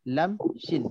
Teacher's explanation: Lam, shin. Shin kat belakang sikit, lam kat depan.